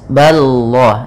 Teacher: Kemudian pada lafal Allah, lamnya tebal. Ini lafal lam tafkhim, yaitu ba-nya tipis